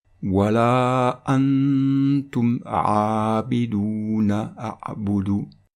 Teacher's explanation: on va prolonger le noun avec soukoun pendant 2 temps, 1 seconde, parce qu'il se trouve devant le ta qui est une lettre de dissimulation